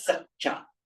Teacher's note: double C, non-aspirated, double CA.